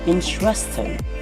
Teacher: the stress is on in, so it should be read as interesting